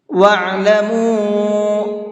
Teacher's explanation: عین کو حلق سے نکال کر کے پڑھیں گے اور اس چھوٹے مد کو 1 سے 3 الف کے برابر کھینچ کر کے پڑھیں گے۔